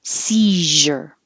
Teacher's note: tongue is is letting the air flow over the whole time it's the same as shh but with voicing